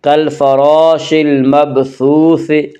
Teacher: کالفراش المبثوث، کالفراش المبثوث، سا کو نرم آواز کے ساتھ پڑھیں گے۔ سا کا مخرج زبان کی نوک اور ثنایا علیہ کا کنارہ ہے